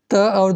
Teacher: क्योंकि त और द का उच्चारण स्थल क्या है? दंत है।